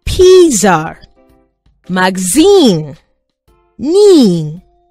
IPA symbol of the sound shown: i: